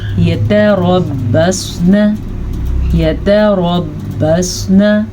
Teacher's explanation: آخری لفظ جو نون پہ زبر ہے اسے آپ نے لمبا کرنے کی غلطی نہیں کرنی